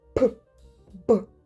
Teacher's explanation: Ми прослідковуємо, як повітря вибухає після зімкнення губ. · М- дзвінкий, сонорний, носовий та твердий. П та б ці пригосні творяться за допомогою повного зімкнення обох губ і з допомогою різкого вибуху повітря. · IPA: [п], [б]